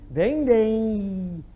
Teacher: não é dígrafo, é ditongo. É um E e um I. Vendem. A gente transcreve como Y, mas tem o som de I, né?